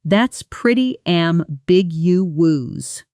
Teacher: And in fast speech, "that's pretty ambiguous" often blurs into "that's pretty ambiguous." The middle syllables almost swallowed together.